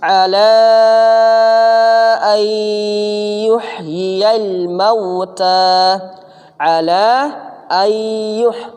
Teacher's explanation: Nun sukun ini berubah menjadi ya kalau ketemu ya.